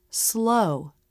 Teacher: jaw drop for the first position and rounded lips for the second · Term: O diff thong, O diphthong